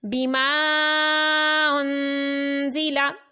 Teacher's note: لام زبر لا، ان زی لا، بما انزلا۔ الف مدہ کے بعد حمزہ دوسرے کلمے میں ہے تو مد منفصل ہے، اس کو کھینچ کر پڑھا۔ انزلا میں نون ساکن کے بعد زا ہے تو اخفاء کا قاعدہ ہے، یہاں پر غنہ کریں گے۔